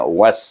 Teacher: Was bunyi betul-betul bunyi hamas dan safir, itu berdesir.